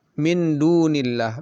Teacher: nun mati bertemu dengan Dal yang merupakan huruf ikhfa kubra maka lebih lama